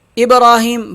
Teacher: با پہ قلقلہ کریں گے، با ساکن ہے اس لیے یہاں قلقلہ کیا جائے گا